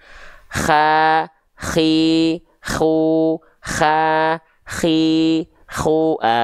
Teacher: karakteristik huruf kho karena keluar dari tenggorokan paling atas, ya tentu berbeda dengan hak kecil dan huruf hak besar. Dia akan seperti mendengkur, seperti. Ya, seperti mendengkur.